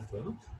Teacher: 알레프는 목을 닫았다가 사실 열어주는 자음입니다